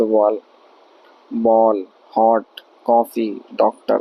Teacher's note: इनमें कुछ शब्द में प्रयोग होने वाली ध्वनि हिंदी से भिन्न है। हिंदी से भिन्न यह ध्वनि आ है जो हिंदी की आ तथा ओ के बीच की ध्वनि है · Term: आगत ध्वनि